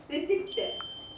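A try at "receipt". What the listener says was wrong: ರಿಸೀಟ್, ಪಿ silent ಇಲ್ಲಿ.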